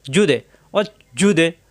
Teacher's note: জিহ্বার মাঝখানে উপরে তালুতে এই জু মিলবে দালের সাথে জু দে দাল সাকিন কলকালা ধাক্কা হবে